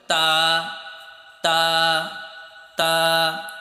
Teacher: তো এটার উচ্চারণ করার সময় তোমার উপরে যে সামনে 2টা দাঁত রয়েছে, এই দাঁতের গোড়ার সাথে তোমার জিহ্বার আগাটা লাগিয়ে দিবে। দেখো, উপরের দাঁতের গোড়ায় জিহ্বার আগা লাগিয়ে দাও।